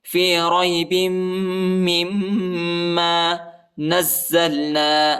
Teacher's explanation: وإن كنتم في ريب مما با کو جو ہے میم کے ساتھ ملانا ہے، اور اس میم کو دوسرے میم کے ساتھ ملانا ہے، دونوں کے اوپر شد آیا ہے، ٹھیک ہے، اور دونوں کو جو ہے شدت کے ساتھ پڑھنا ہے، ٹھیک ہے، اور غنہ بھی ہے. فی ریب مما نزلنا نون کو زا کے ساتھ ملانا ہے، اور زا کو لام کے ساتھ ملانا ہے.